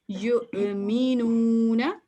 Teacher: واو نہیں پڑھا جائے گا اور یا کو ہم ڈائریکٹ حمزہ سے ملا دیں گے، تو جھٹکے والی آواز ہم پروناؤنس کریں گے